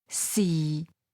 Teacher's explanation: Sixth tone, low level